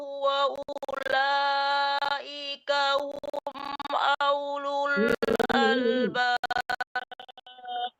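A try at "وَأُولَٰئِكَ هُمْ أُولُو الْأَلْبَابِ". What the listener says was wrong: Kenapa alifnya kan dhamma? Ulul bukan aulul. Ulaika hum ulul albab.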